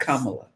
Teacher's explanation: They'll like I used to say Kamala, but it's the accent is on the first syllable, not the last